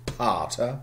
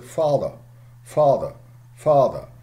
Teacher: you blow up your cheeks and then explode in a bilabial plosive